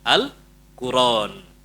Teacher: hamzahnya dihilangin. Jadi bacanya Alquran